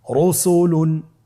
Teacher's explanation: পরবর্তী উদাহরণটি দেখুন, রসুলুন। রয়ের উপরে পেশ এসেছে, তাহলে র হরফটিকে মোটা করে পড়তে হবে।